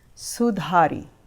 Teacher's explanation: it's an aspirated D where you place your tongue behind the front two teeth